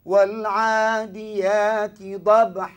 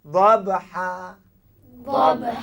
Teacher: tak ada bunyi Hamzah tak ada lebih panjang harakat